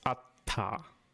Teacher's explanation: with atta you actually close it off completely right through your mouth and your nose right and then you let go again